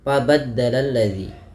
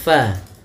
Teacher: ini huruf fa salah satu sifatnya yaitu dia hams, mengalirnya nafas. Fa, hati-hati di dalam melafalkannya, jangan sampai dia terbaca dengan fabaddalal ladzi.